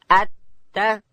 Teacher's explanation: تا ادا کیږي د ژبې سر د لوړې زامې د مخ د دوو غاښو و بیخو ته ورړو